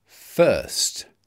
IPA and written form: fɜːst (first)